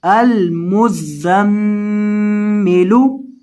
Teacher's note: اور میم کے اوپر آپ نے گنہ کرنا ہے کیونکہ میم مشدد ہے